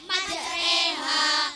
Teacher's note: bacaan imala ialah memberikan bunyi fathah pada kasroh